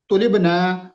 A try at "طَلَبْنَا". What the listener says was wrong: اس کو نا لمبا نہیں کریں گے، طلبنا اگر زیادہ لمبا کر دیا تو یہ جمع متکلم کا صیغہ بن جائے گا۔ اس کو پڑھنا ہے طلبنا، بس طلبنا۔